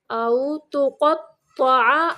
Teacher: قاف کو موٹا پڑھنا ہے، تو کو بھی موٹا پڑھنا ہے